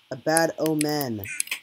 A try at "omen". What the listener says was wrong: Not oman. You're just stretching out the vowel.